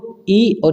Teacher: जो आपकी जीवा है कहां टच हो रही है आपका तालव्य की तरफ टच हो रही है · जो हवा निकल रही है वो कहाँ से निकल रही है, तालव्य की तरफ से निकल रही है